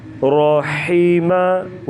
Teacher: حا کی باریک آواز گلے سے ادا کریں گے